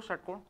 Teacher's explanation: षटकोण, षटकोण बोलो, षटकोण, आपका जीभ जो है षटकोण बोलने में मुड़ जा रहा है क्या ऊपर की तरफ, षटकोण का उच्चारण करने में जीभ मुड़ के मूर्धा वाले स्थल को टच करेगी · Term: मूर्धन्य